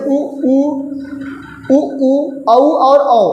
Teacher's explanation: जब ओ बोलेंगे तो क्या होगा? ये आपका जो ओठ होगा वो क्या होगा? वृत्त जैसा बन जाएगा। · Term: वृत्ताकार